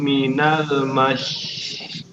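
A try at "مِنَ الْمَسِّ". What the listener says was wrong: Ingat yang terakhir huruf sin biasa bukan shin. Mas bukan mash.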